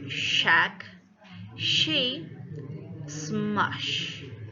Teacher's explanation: Also, these two sounds are palato-alveolar, and the tip of the tongue is close to the alveolar ridge, while the front of the tongue is concave to the roof of the mouth